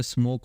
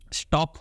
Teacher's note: फिर आ गया S, S is what your voiceless alveolar fricative, ठीक है, वॉइसलेस है, ठीक, एस बोल के देख लो आप, ठीक है। तो एस का प्रोनाउंसिएशन में there is no working of your vocal cords